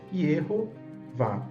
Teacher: É uma sílaba aberta com vogal longa. Já a segunda sílaba aqui, Vá, é a sílaba tônica e exige uma vogal longa